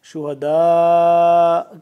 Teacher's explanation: شہداء کر کے آگے سے حمزہ کو سائلنٹ کر دیں گے، یہاں پہ وقف ہو جائے گا